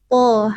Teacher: menyentuhkan punggung ujung lidah ke pangkal gigi seri atas. To, hanya beda sifat. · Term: huruf to